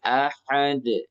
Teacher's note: dal langsung pantul, jangan tahan